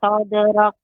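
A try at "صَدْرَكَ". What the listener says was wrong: kafnya lebih ditampakkan Ibu. Huruf kaf ketika sukun sifatnya adalah hamas. Sadrak, sadrak. sadrak. caranya Ibu, matikan dulu caranya ditekan sadrak kemudian buka sadrak tapi cepat sadrak sadrak sadrak.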